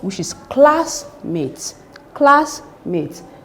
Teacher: the stress should be on the first word, which is classmate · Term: compound noun